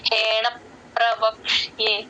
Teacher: ని జాయిన్ చేయాలి ప కింద రకారం ఉంది కాబట్టి హేణ ప్రవక్షియే ఆ ప కింద రకారం ఎప్పుడు వచ్చినా సరే రెండు పెదాలు లోపలి వైపుకు మూసేస్తే కరెక్ట్ గా వినిపిస్తుంది